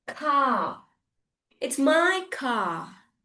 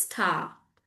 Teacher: whenever the vowel is with the R the R remains silent and the vowel will never make it sound short vowel sound.